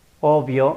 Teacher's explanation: labial al crown gala ve por ejemplo obvio o vas a notar que hay vibración de las cuerdas por lo tanto será consonante sonora y además el aire sufre retención momentánea en su salida en